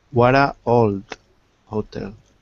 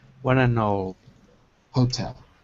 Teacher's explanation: the N has to pass to the word old. What a nold.